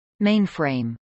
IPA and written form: mˈeɪnfrˌeɪm (mainframe)